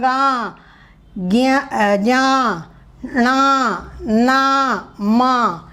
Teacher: इनकी ध्वनि को निकालते वक्त कंठ और नाक दोनों का प्रयोग होता है। नेज़ल प्रोनाउंसिएशन भी नेज़ल प्रोनाउंसिएशन भी होता है, यानी नाक से भी हम उस हवा निकलती है तो सेम वही रहेगा।